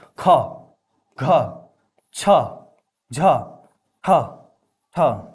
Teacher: सब में हकार की ध्वनि सुनाई दे रही है। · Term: महाप्राण